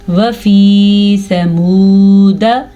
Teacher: واو مدہ ہے اس لیے اس کو کھینچ کے پڑھیں گے, دال کو لمبا نہیں کریں گے. یہ واو مدہ کو صرف ہم کھینچیں گے کیونکہ واو ساکن سے پہلے پیش ہے.